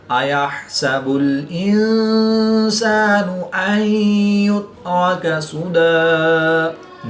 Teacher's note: نون ساکن کے بعد سین حروف اخفا میں سے ہے تو یہاں پر اخفا ہوگا یعنی غنہ زمانی کر کے پڑھیں گے · نون ساکن کے بعد یا حروف معلول میں سے ہے تو یہاں پر ادغام مع الغنہ ہوگا یعنی غنہ کر کے پڑھیں گے. دو زبر کی تنوین کو وقف کی حالت میں الف مدہ سے تبدیل کر کے پڑھیں گے